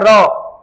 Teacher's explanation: परकंपित, मतलब जिसमें सांस में कंपन उत्पन्न हो जाता है